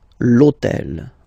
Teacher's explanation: this hôtel, okay, because it starts with H, but remember that in French we don't pronounce H, okay, so basically the first sound of the word is the vowel O